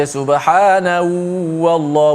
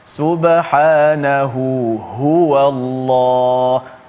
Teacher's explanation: dia akan slow intonasi pertama ha dan dia akan kuatkan intonasi ha yang kedua